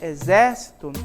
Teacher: essa sílaba aqui é a mais forte é a antepenúltima